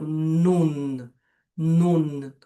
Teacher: a gente joga a língua pro palato e faz um esforçozinho para pronunciar o nun